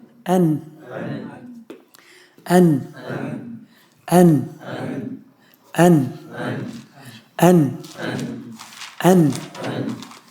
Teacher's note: زبان کے کناروں کو انیاب تک کے اوپر کے انیاب تک کے مسوڑوں سے ملا کر نون ادا ہوتا ہے · نون کی آدھی تکمیل خیشوم سے اور آدھی تکمیل زبان سے